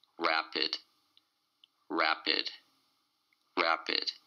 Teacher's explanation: It's two syllables, and the stress is on the first syllable.